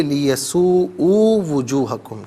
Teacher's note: لیسوء حمزہ پر الٹا پیش ہے، ایک الف کی مقدار کھینچ کر پڑھیں گے